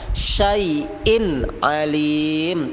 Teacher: tidak boleh ada dengung, tapi harus izhar jelas